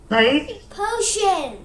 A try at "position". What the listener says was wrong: Not potion. There is S also. Position.